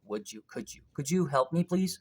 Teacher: uh it's safer to pronounce it in fast speech as could you or would you right so d and y becomes j